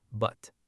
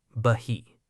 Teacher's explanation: If the word but is followed by a word starting with a consonant, you must completely suppress the explosion of the T. Do not let out any air. Hold the tongue tip on the ridge or stop the airflow in your throat entirely, moving instantly to the next consonant. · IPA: [bət]